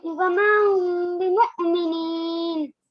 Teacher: میم ساکن کے بعد با آ رہا ہے تو ہم اس میں غنہ کر کے پڑھیں گے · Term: اخفاء شفوی